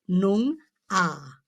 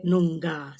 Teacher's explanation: like the G is almost silent